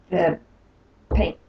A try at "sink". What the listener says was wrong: Okay, so you wash your dishes in, okay, in pink? No, not in pink ballet shoes. In the sink. In the sink.